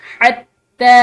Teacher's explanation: تا پر یہ کھڑی زبر ہے، ٹھیک ہے، اور شد بھی ہے، تو اس کو پریشر کے ساتھ اور لمبا پڑھیں گے